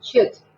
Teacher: la pronunciación de esa I solita es casi como una E, pero una E cortita, una E como menos abierta que la que nosotros pronunciamos